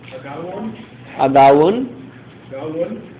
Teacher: Every time you say what we see as an O vowel, you've got a hint of oo in there. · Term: Open O